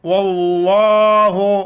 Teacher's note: لفظ اللہ کے لام کو موٹا کر کے پڑھیں گے